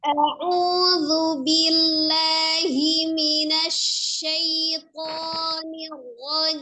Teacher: Harus jelas ya perbedaan antara bunyi huruf hamzah dan huruf ain ya. Hamzah dari tenggorokan bagian bawah, kemudian ainnya dari tenggorokan bagian tengah ya.